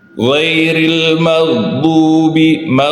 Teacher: Ghairil maghdubi di huruf gha, ya, itu antara g dan kha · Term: ghain